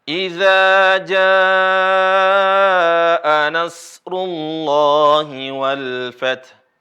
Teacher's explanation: perhatikan di sini idza dibaca Dua harakat dua harakat ja ini bisa dibaca empat atau lima harakat